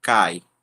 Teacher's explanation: temos uma vogal A e o I, né, formando uma semivogal, mas os dois estão na mesma sílaba, numa sílaba só. Então, a palavra cai eh é uma só sílaba.